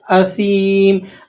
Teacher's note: آپ نے اس کو اسیم اس طریقے سے نہیں پڑھنا، سیٹی نہیں ڈالنا اس میں، ٹھیک ہے؟ آپ اس بات کا خصوصی طور پر دھیان رکھیں کہ سا کی ادائیگی میں سیٹی نہیں نکلے گی، سیٹی برآمد نہیں ہوگی